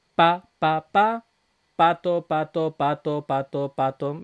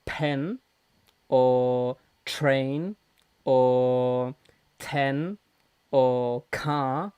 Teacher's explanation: estoy haciendo una p una t que son consonantes en español que no son aspiradas Entonces el papel prácticamente no se mueve pato pato pato pato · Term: no aspirada